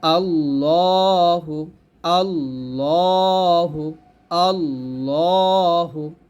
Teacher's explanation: যাবে না ল বলতে হবে কারণ হচ্ছে এটা আল্লাহ শব্দ লাম এই আল্লাহ শব্দ লাম এখানে জবর থাকলে এটাকে মোটা করে পড়তে হয়